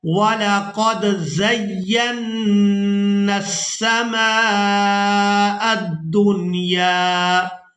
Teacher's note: یہاں نون مشدد پر ہم نے غنہ بھی کرنا ہے